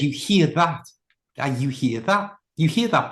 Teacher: I didn't even pronounce the t.